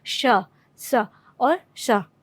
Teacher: वागिंद्रियाँ कुछ बंद रहती हैं, इसलिए वह घर्षण करके जो है वह ध्वनि बाहर निकलती है